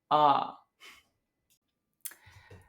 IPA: ɐ